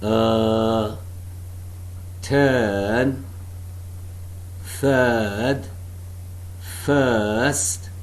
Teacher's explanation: the center of the tongue is raised between the half close and half open positions